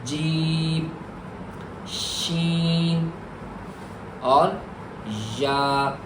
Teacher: यह तीन हुरूफ का जो मखरज है, वह जबान का दरमियानी हिस्सा है।